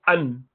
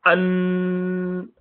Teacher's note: the makhraj is stopping straight away, yet there's another passage for the sound to continue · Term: bainiyah